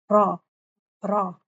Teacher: رول ہو رہی ہے نا میری زبان، ایک بار ہو رہی ہے